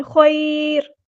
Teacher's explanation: جب ہم وقف کریں گے تو را کو کیسے پڑھیں گے، یہاں پر ہم را کو باریک پڑھیں گے، لائٹ لیٹر بن جائے گا